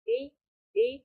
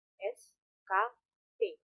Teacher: bunyi bersuara seperti b, d, berbeda dari bunyi tak bersuara seperti s, k, t